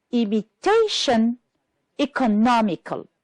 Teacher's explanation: The words that are stressed on the third syllable are imitation, economical.